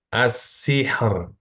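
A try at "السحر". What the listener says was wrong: Masih ada tebalnya sedikit. As-sihr. Sih. alirkan lagi. Sihr.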